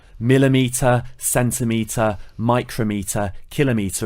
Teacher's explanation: The stress is always placed on the first syllable.